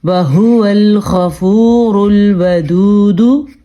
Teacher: ہا کے مخرج کا دھیان رکھنا ہے, یہ نہ تو ہا ہے اور نہ تو خا ہے, یہ ہا ہے. اور غین جو ہے وہ پر پڑھا جائے گا کیونکہ حروف مستعلیہ میں سے ہے, اور را پر پڑھا جائے گا کیونکہ را پیش کی صورت میں ہے.